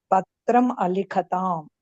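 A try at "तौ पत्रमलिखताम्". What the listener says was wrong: పత్రం కాదు, పత్రమలిఖతాం. సంధి పత్రంలో ఏమైంది? మా వచ్చింది. ఎందుకు? ఆ వచ్చింది కాబట్టి. పత్రమలిఖతాం.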